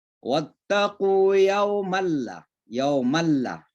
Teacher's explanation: Jadi seolah-olah suara nun itu sudah nggak ada. Langsung masuk ke huruf lam. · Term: idgham bila gunna